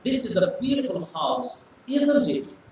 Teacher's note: so it is going from lower pitch to higher pitch · when you say isn't it it is going higher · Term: intonation